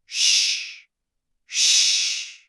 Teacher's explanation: You'll notice it's a much deeper, fuller sound than the English sh in shoe.